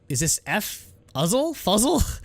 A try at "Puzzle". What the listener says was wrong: It's pronounced puzzle in Korean anyway. They don't have an F sound.